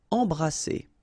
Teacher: So you don't hear any M, it's really in your nose. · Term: nasal